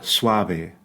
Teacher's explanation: the top teeth never touch that bottom lip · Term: softer B